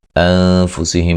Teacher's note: نون ساکن کا باریک اخفا ہے ، میم ساکن کا اظہار ہے.